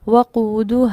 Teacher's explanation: दो साकिन इकट्ठे होने की सूरत में अलिफ मद्दा को ड्रॉप कर दिया गया। लफ्ज़ क्या पढ़ा?